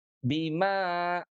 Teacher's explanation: Fathah ketemu dengan alif itu panjangnya adalah dua harakat